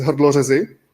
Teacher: It has R used as a vowel.